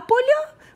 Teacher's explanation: а поля – множина. Наголос перемістився на закінчення. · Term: рухомий наголос